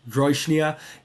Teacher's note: it does have stress on the initial syllable, not on the second syllable